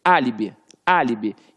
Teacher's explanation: quando você fala que você tem um álibi, você tem ali, ó, a antepenúltima sílaba forte. Por isso que ficou líbi.